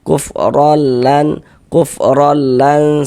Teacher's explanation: Cara membacanya yakni dengan cara memasukkan. Jadi bunyi nun sukun atau bunyi tanwinnya dimasukkan ke dalam huruf idgham bila gunnahnya, kemudian tidak didengungkan. Jadi dimasukkan saja, tidak digunnahkan.